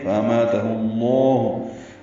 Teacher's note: لام اسم جلالہ سے ملائیں گے، پر پڑھیں گے، فَأَمَاتَهُ اللَّهُ لام اسم جلالہ کو پر پڑھنا ہے · ہا کو لام اسم جلالہ سے ملائیں گے